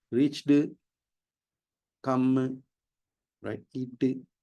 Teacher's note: They put a ooh sound vowel sound after the word.